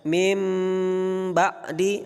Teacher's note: maka dibaca mim dengan gunnah serta disamarkan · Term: iqlab